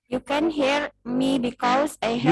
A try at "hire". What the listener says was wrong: You can hire, bukan here.